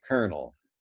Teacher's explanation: in colonel but of course we do not say the l we convert the l into its sister liquid r · We convert the L into its sister liquid R, and we say kernel